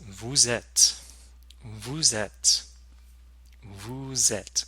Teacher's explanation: You'll notice that vous has a liaison with the verb être.